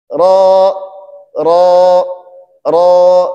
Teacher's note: ketika kita menyebutkan huruf ro maka kita diperintahkan untuk mengangkat pangkal lidah kita agar huruf r itu menjadi tebal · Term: huruf tebal